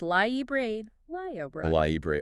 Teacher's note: A lot of people mistakenly say something like library, but you got to hit that second R sound.